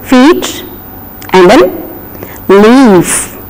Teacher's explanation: Even though there is I-E, E-I, E-E, the sound is long E as represented by I with 2 dots